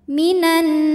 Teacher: nunnya ghunah musyaddadah karena Nun bertasdid cara bacanya adalah berdengung